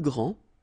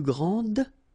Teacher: Okay, so phonetically what you can hear is that this first form here for the masculine, grand, so you don't pronounce the final D, will be exactly the same as the plural form for the masculine, grand.